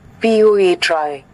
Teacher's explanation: And option D, a dactyl, is a sweeping, three-syllable foot that moves from a stressed syllable down through two unstressed syllables, like the word poetry.